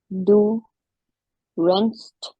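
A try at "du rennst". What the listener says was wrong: Perfect.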